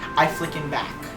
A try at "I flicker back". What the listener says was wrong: I think it's I flicker back. No, you said flickin'.